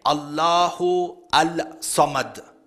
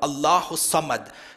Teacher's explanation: You don't say Allahu Al-Samad. According to the rules of tajweed, the Lam is silent, there is idgham · You join it together, Allahu Samad. So the Alif Lam is silent. Perhaps to the listener, he doesn't even realize that there is the letter Alif Lam.